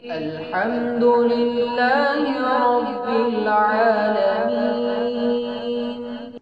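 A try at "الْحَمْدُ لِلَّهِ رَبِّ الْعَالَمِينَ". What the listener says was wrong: अल्हम्दो मजहूल नहीं पढ़ेंगे, अल्हम्दु मारूफ।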